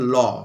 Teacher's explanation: যে ধ্বনি উচ্চারণের সময় শ্বাসবায় জীব জীবের দুপাশ দিয়ে নির্গত হয় তাদেরকে বলায় পার্ষিক ধ্বনি।